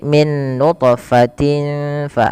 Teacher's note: Cara membacanya tanwinnya samarkan ke fa tidak lagi dengan jelas suara tanwinnya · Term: ikhfa